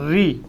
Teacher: री, है ना, तो री बोलोगे तो टिप ऑफ द टंग, जीवा का आगे का हिस्सा है, वो ऊपर वाले दांत की जड़ों में घुस रहा है। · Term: मूर्धन्य